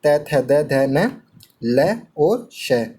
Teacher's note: इन सभी वर्णों का उच्चारण स्थान दंत होता है। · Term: दंत्य